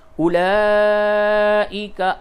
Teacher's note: جہاں بھی قرآن شریف میں یہ لفظ آئے تو اس کی واو کو نہیں پڑھتے